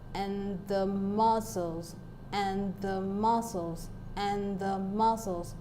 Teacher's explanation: we have and the being unstressed and then we have the first part of the word muscle being stressed that is M as the stressed syllable of the word now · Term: anapest